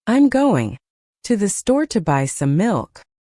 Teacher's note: Notice how certain words are stressed. Going, store, buy milk.